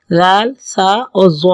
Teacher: زبان کی نوک جب اوپر کے اگلے دو دانتوں کی جڑ کی طرف والے آدھے حصے سے لگے گی تو دال، تا اور تو کا مخرج ہے، اور جب وہی زبان کی نوک اوپر کے اگلے دونوں دانتوں کے نوک کی طرف والے آدھے حصے سے لگیں گے تو پھر زال، سا اور ضا نکلے گا